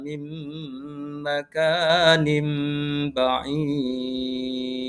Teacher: Kemudian pada lafal yang kedua, pada lafal mim makanin, di situ ada nun sukun bertemu dengan huruf mim. Ini dinamakan bacaan idgham bi gunnah, di mana cara membacanya adalah dengan dengung.